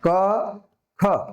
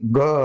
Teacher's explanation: જો અહીંયા અડો આંગળીએ તો તમને આ હળિયા ઉપર ખબર પડશે કે એમાં તમને ધ્રુજારી આવશે, કે ક, ખ ઓછી ધ્રુજારી આવશે. પણ ગ, ઘ, અં તો એમાં વધુ સ્પષ્ટ ધ્રુજારી આવી.